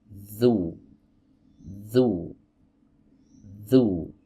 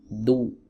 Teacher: huruf dzal keluar dari ujung lidah digesekan dengan ujung-ujung gigi seri atas